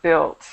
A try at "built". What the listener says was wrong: we pronounce that without the U, just built.